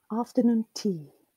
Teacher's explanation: So noon used to be, or it is, when the word is in isolation, is a marked syllable or a stressed syllable, but not when it's grouped together with the word tea. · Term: stress shift